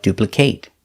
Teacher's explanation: if it's a verb pronounce it with the long a like duplicate